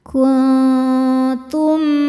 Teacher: Cara bacanya nun disamarkan ke ta disertai dengung. Namun dengungnya sedikit ya karena ta masih dekat dengan nun makhrajnya. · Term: ikhfa hakiki aqrab